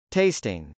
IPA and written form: tˈeɪstɪŋ (tasting)